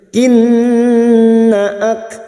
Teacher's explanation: nun yang bertasdid gunna musyaddadah kita dengungkan selama 3 harokat